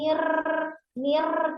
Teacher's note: irnya memiliki sifat takrir getar ya tapi tidak boleh lebih dari dua maksimal sudah dua jadi yang mengalir itu suara bukan getarannya Nir